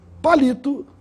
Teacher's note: A palavra palito tem a sílaba mais forte na penúltima sílaba, no li. Portanto, é uma palavra paroxítona.